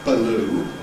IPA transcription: bəˈluː